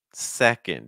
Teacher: Do you hear how much stronger the first syllable is? Like if you say second three times, the part that your listener should hear is that se.